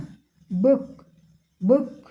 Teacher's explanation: द बुक द बुक द बुक बुक, ब के नीचे अघोषित चिन्ह लगा हुआ है वॉइसलेस का। और क में नॉट ऑडिबल रिलीज